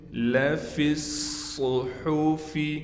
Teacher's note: صاد میں سیٹی بھی نکالیں گے، صاد پر تشدید ہونے کی وجہ سے صاد پر ٹھہراؤ بھی کریں گے، ہا کو صاف کر کے گلے سے نکالیں گے۔